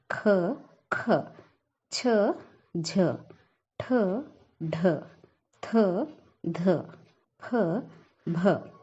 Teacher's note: ಹೆಚ್ಚು ಉಸಿರಿನಿಂದ ಉಚ್ಚರಿಸಲ್ಪಡುವ ಅಕ್ಷರಗಳಿಗೆ ನಾವೇನಂತೀವಿ? ಮಹಾಪ್ರಾಣ ಅಕ್ಷರಗಳಂತೆ ಕರಿತೀವಿ.